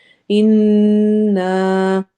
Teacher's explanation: نون کے اوپر جب بھی شد آتی ہے تو ہم غنہ کر کے پڑھتے ہیں، ناک میں آواز لے کے جاتے ہیں